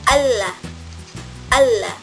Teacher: lateral approximant pada alveolar